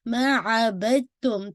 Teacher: جو دال کی آواز ہے وہ تا کے اندر مرج ہو رہی ہے ، کیوں؟ کیونکہ دونوں سیم مخارج ہیں، دونوں سیم آرٹیکولیشن پوائنٹ